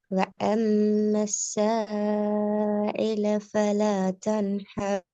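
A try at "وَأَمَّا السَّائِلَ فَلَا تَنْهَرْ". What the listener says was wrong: அடுத்தது, ஐல இந்த இந்த உச்சரிக்குள்ள தொண்டையிட்ட கொஞ்சம் கீழுக்கு போய் சவுண்ட் வருது. வாயில முன்னுக்கு இந்த வருது இல்ல. எந்த இடத்துல சவுண்ட் உச்சரிச்சீங்களோ அதே இடத்துல தான் நீங்க உச்சரிக்கணும். அ இ உ மூணும் ஒரே இடத்துல தான் வரணும் வாயில.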